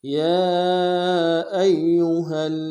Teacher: یا کے اوپر کھڑا زبر ہے اور مد عارض ہے، دو الف کی مقدار میں کھینچیں گے، حمزہ کو یا کے ساتھ ملانا ہے، یا کے اوپر تشدید زور دیں گے، اور ہا کو آگے لام کے ساتھ ملانا ہے، لام کے اوپر تشدید زور دیں گے۔